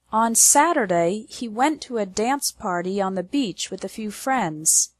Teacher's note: the stress is on the words Saturday went dance party Beach and friends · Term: strong words